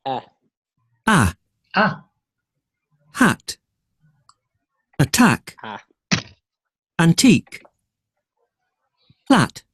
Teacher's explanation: Front, low front. The lips are neutrally opened and the is short.